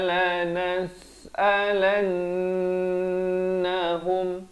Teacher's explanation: Lan di sini wajibul gunnah dengung dua harakat.